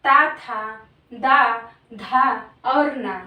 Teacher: जीभ का अग्रभाग हमारे दांतों को, ऊपर के दांतों को स्पर्श करता है उसे हम दंतीय व्यंजन कहते हैं।